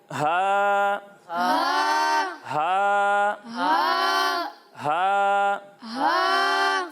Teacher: جب ہم ہا کی ادائیگی کریں گے تو اسے حلق کے نچلے حصے سے پڑھیں گے